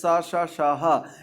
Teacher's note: इनको बोलने में ऊष्मा का प्रवाह अधिक होता है, इसलिए इन्हें ऊष्म व्यंजन के नाम से जाना जाता है